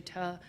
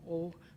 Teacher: some people, for example, in the Midlands might say tuh, and other people further north might say the O sound more often